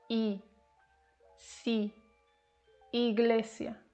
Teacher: It's a closed vowel, like I in C.